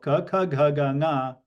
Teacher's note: you can see that the contact point or point of modulation is throat or kantha. Okay, so ka, kha, gha, ga, nga, the sthana is kantha, so those are kantyas. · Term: ka varga